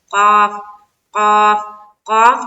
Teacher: اور قاف کو بھی ہم نکالیں گے کہاں؟ حلق سے۔